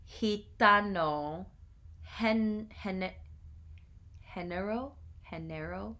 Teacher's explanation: same sound as the Spanish J A strongly aspirated English H